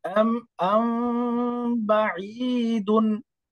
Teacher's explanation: মিম সাকিনের পরে বা আসলে মিমটাকে একটু লুকিয়ে ইকফা করে পড়তে হয়। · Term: মিম সাকিনের ইখফা